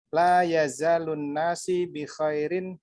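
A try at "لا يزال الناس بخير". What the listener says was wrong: La yazalun nasu, bukan si.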